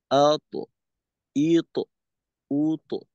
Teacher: হামজার হরকত কিন্তু আংশিক লম্বা হয়ে যাচ্ছে। তো লম্বা করা যাবে না।